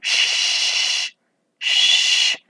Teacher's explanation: Es una fricativa, que es un sonido que podemos prolongar indefinidamente